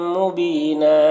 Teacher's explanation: بی میں یا مدہ ہے، اور نن یہاں پر وقف کریں گے تو ایک زبر کے ساتھ الف پڑھیں گے